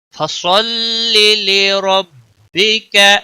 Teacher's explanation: صاد کو موٹا پڑھیں گے، لی کو کھینچنا نہیں